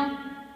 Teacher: તો નમાં જીભ છે એ દાંતને અડે છે, મુખ અને નાક બંનેમાંથી એનું હવા છે એ બહાર નીકળે છે